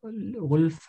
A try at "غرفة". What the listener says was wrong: Bruder, wenn du immer Ghurfa sagst, kommt es mir irgendwie, als würdest du ein L sagen. Also Ghurfa. Es ist Ghurfa.